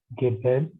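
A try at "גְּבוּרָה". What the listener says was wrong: No. Gebura. Gebura. After Beth is Shurek, so it should be U pronunciation. Gebura. Gebura. Gebura.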